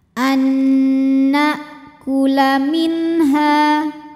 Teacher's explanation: dileburkan ke Nun kedua disertai bunyi dengung jadi bunyi n tahan an ini boleh juga disebut dengan Idgham